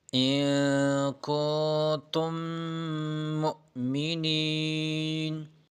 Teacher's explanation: فلا تخافوہم وخافون إن كنتم مؤمنين، نون بھی ساکن ہے اور آخر میں میم اور میم مشدد ہے، میم ساکن ہے اور اس کے بعد میم مشدد آیا ہے تو میم میں ادغام کرے گا، دونوں میم مل کر ایک ہو جائے گا